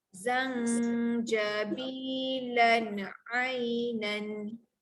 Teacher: untuk huruf jim tengah-tengah lidah naikkan ke atas